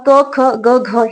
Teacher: हे जे चार व्यंजन आहेत याचा उच्चार कंठामधून होतो त्यानंतर ह जो महाप्राण आहे याचा सुद्धा उच्चार कंठामधून होतो आणि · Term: कंठवर्ण